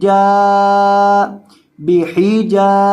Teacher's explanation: अलिफ मद्दा की वजह से जीम को लंबा करके पढ़ा जाएगा